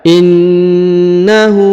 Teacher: huruf ka dibaca Dua harakat karena di depannya terdapat Alif · Kemudian innahu, huruf na ditahan dan ditekan karena terdapat tanda tasdid atau penekanan. Kemudian huruf hu dibaca 2 harokat karena di atasnya terdapat tanda u terbalik ya.